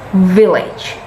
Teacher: your lower lip is under the upper teeth